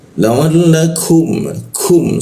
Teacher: ku di siku tenggorokan. Lidahnya kita turunkan sehingga ada rongga udara terbuka dan ada hembusan udaranya. La'allakum, kum seperti itu ya, hembusan udaranya seperti itu.